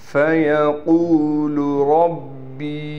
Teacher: با یا زیر بی اور اس کے اوپر چھوٹا سا مد بھی ہے، لہٰذا 3 الف کی مقدار اس کو ہم کھینچیں گے